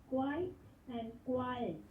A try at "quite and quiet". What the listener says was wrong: Perfect, excellent.